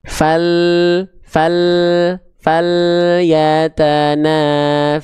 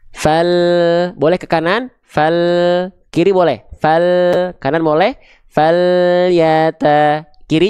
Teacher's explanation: makhraj huruf lam itu lidahnya nempel ke langit-langit bagian depan, nah dia diinhirafkan, dia disimpangkan kemana? Agak ke kanan atau agak ke kiri.